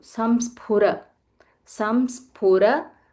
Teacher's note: This is anusvara, and then followed by half sa, and it's, don't say it as fu, it is phu.